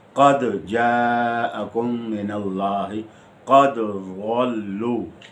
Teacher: یہاں دال کے قلقلہ کو خوب واضح کر کے پڑھنا چاہیے